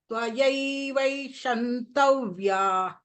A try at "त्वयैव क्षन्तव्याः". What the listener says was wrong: You are telling Shantavyaha. Shantavyaha will become Shiva. Here it is Ksha. Shantavyaha.